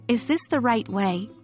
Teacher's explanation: is this the right way is a yes no question and your voice should rise at the end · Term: Rising intonation, rising intonation